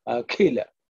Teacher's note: Okay, it's not Akhila, it's Akhila. So the Kha is aspirated with a little bit of effort and air.